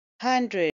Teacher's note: it's a two syllable word and stress is on the first syllable